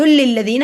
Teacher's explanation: لام کو لام سے ملایا کیونکہ لام پہ شد ہے